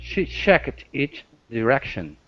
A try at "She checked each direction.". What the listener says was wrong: Okay, the only thing here, instead of saying check it, checked, go straight to a T. She checked. She checked each direction. Give me a good CH.